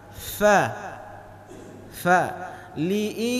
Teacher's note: Kalau tidak berhembus nafas ketika kita ucap huruf fa, liilafi, belum benar. Jadi huruf fa itu diantara huruf yang ketika kita ucapkan berhembus nafas ke depan